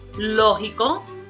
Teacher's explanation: the prosodic accent is going to be on the first, which is the third to the last